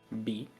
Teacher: It's a, what's it that the IPA term said? It's a bilabial plosive, meaning you use both of your lips